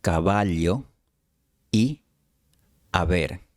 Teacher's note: Cuando la V estaba entre dos vocales, probablemente se pronunciaba usando solo los labios, sin los dientes. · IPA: [β]